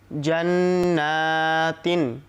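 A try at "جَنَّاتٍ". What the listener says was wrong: আচ্ছা, জান্নাতিও, তিও গুণনা করবো আমরা। দর্শক, আমি কেন এরকম শেখাই যে সবাই পড়ে তিন বা থামলো না, আমি এখানে গুণনা এই জন্য করাতে চাই, যেহেতু তানবিনের বামে 20টি হরফ আসলে গুণনা হয়, সেটা ইকফার ব্যানারেই হোক, ইদগামে বাগুন্নার ব্যানারেই হোক, অথবা কলব বা ইকলাবের ব্যানারেই হোক, গুণনা তো হয়।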